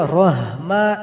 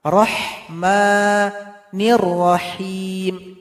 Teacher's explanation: Ini ha tipis yang pedas keluar dari tengah tenggorokan.